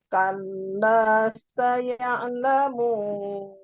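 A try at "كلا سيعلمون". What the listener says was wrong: Nah, itu terlalu turun.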